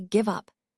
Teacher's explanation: the emphasis should be on up. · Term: stress